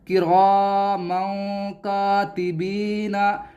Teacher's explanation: तो यहाँ पर देखें तनवीन है और तनवीन के बाद काफ है और काफ हरूफ इख्फा में से है, तो यहाँ पर भी इख्फा होगा। इख्फा का मतलब नून की आवाज़, तनवीन की जो आवाज़ है वो साफ नहीं आएगी, बल्कि आपको इस तरह पढ़ना है किरामन किरामन, ऐसे नहीं किरामन किरामन कातिबीना, बल्कि आपको ऐसे पढ़ना है किरामन कातिबीना।